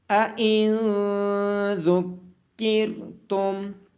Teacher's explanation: نون ساکن کے بعد حروف اخفا میں سے ذال ہونے کی وجہ سے اس پہ اخفا ہوگا۔